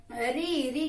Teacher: री का उच्चारण स्थान हमारा हो जाता है मूर्धा